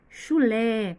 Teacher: Chulé tem acento no lé e também é a sílaba tônica, é a sílaba que é mais forte, que tem mais destaque